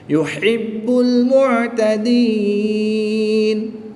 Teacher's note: وقف کی حالت میں یہاں پر مد عارض ہوگی، 2 سے 3 الف تک کھینچ کر پڑھیں گے